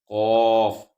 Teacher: خو یہ موٹا حرف ہے، خو حلق سے ادا ہوتا ہے۔ قوف، قوف اس کو موٹا کرنا ہے، اس کا مخرج ہے زبان کی جڑ